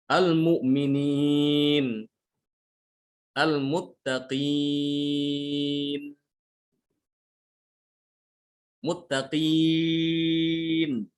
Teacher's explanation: Iyanya itu iya madiyah tidak boleh dia keluar dari hidung. Yang keluar dari hidung itu nanti setelah dia mau berhenti ya. · Ya dia itu bukan dari hidung suaranya. Tapi dari hawa ya. Dari jauf.